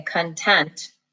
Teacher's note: that word content we say content the accent is on the second syllable